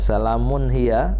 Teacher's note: tanwin berjumpa dengan huruf H itu izhar jelas dan terang jangan lama-lama jangan dengung